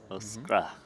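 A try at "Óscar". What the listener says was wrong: You can still say the R. It's not. You don't have to say Oscar.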